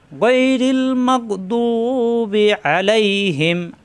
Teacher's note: জিহ্বার গোড়ার কিনারা উপরের মারি দাঁতের গোড়ায় লাগিয়ে দু এক আলিফ টান